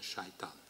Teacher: Satan devient Satan avec palatalisation du S initial dû à la voyelle suivante devient shaitan.